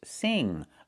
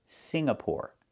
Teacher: The NG makes a sound in your nose.